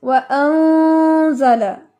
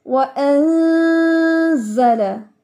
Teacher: नून की आवाज को बारीक कर रखना है, छुपाना है, इसको मोटा नहीं होने देना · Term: इख्फा बारीक